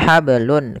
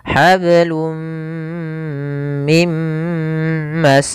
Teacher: karena ketemu mim masuk ke mim tanwinnya hilang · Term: idgam buna